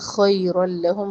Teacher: تنوین کو لام میں مرج کریں گے، ادغام بلا غنہ